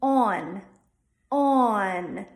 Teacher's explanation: we're adding a little schwa in there it should sound like Dawn not Don